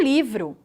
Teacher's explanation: quando eu pronuncio a sílaba vro, eu falo tanto o som do V quanto o som do R. Eu não omito nenhum desses sons. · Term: encontro consonantal